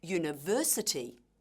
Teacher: in the word university, the stress is on the third syllable